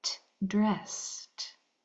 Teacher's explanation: That S, it's voiceless, right? Only air. S. So that ed is going to make its voiceless sound, which sounds like a T.